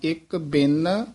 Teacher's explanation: ਇਹ ਬਿਨ ਪੋਲਾ ਨਹੀਂ ਬੋਲਣਾ ਉੱਤੇ ਟਿੱਪੀ ਲੱਗੀ ਹੈ ਬਿਨ ਕਸ ਕੇ ਬੋਲਣਾ